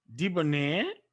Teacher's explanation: the stress is on the end syllable